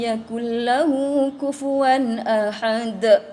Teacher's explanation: Nampak bunyi dia? De. Huruf apa tu? Huruf dal. Itulah dia punya sifat qalqalah